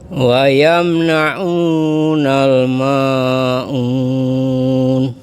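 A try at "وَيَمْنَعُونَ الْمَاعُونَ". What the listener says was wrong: Nah, untuk matnya kepanjangan dikit Bapak, dipendekin saja. Wa yamna'unal ma'un. 2 harokat saja.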